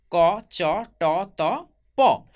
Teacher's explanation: সবগুলি বর্ণই অঘোষ বর্ণ, অর্থাৎ অঘোষ ধ্বনি। সবগুলি ধ্বনি অঘোষ ধ্বনি এবং অল্প প্রাণধ্বনি